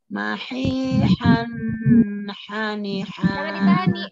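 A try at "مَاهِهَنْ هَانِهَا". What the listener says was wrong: Jangan ditahan, ini jangan ditahan. Izhar jelas ya artinya ya. Jangan mahihan.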